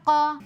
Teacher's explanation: قاف حروف مستعلیہ میں سے ہے، موٹا کر کے پڑھیں گے